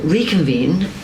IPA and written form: ˌriː.kənˈviːn (Reconvene)